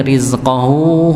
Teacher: hunya dibaca dua dua harakat